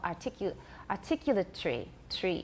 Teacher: semi syllable articu articulatory tree it's not really tree it's tere there's a very short schwa it's hard to count them